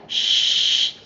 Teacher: Sifat huruf shin adalah sifat hams ataupun hamas ataupun angin yang terlepas.